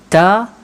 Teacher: Kalau tuan-puan sebut ta, tuan-puan akan perasan lidah berada rendah sahaja di bawah. Okey, dan of course dia akan mengeluarkan bunyi yang nipis sahaja. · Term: istifal